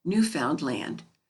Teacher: the name of their country is pronounced with the accent on the last syllable